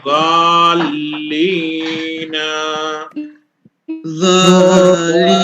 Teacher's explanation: لام کو ڈبل پڑھیں گے ہم غال کو لام میں جوائنٹ کریں گے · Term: تشدید